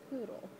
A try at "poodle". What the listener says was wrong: Sounds like you're saying voodoo.